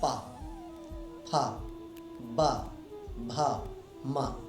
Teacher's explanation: तो जब हमारी जिह्वा अथवा ये ओष्ठ आपस में स्पर्श, आपस में टच होते हैं, तब हम बोल पाते हैं पा, फा, बा, भा, मा। बिना दोनों होठों को मिलाए आप पा फा बा भा मा का उच्चारण नहीं कर सकते, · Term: पवर्ग